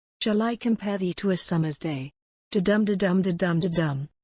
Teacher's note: This verse from Sonnet 18 by William Shakespeare is made of 5 iambic feet, so its pattern is iambic pentameter.